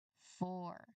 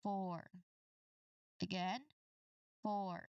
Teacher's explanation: Try to really include that deliberate initial friction and the gentle tongue curl at the end to produce the letter R sound.